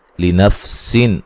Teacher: نون تنوین کا یہاں اظہار ہے، غنہ نہیں کریں گے